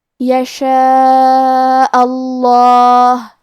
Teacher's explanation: آخری میں کیونکہ حمزہ پہ زبر ہے لہذا ہمیں لفظ الجلالہ مطلب کلمت اللہ کے لام کو تفخیم سے مطلب موٹی آواز میں پڑھنا ہے